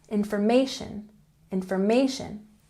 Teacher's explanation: Information has the emphasis on the third syllable.